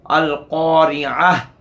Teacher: फिर रा मकसूर है, रा पर कसरा है, इसलिए रा भी बरीक पढ़ी जाएगी।